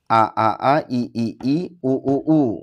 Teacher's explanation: Huruf hamzah keluar dari tenggorokan terjauh atau paling pangkal ya.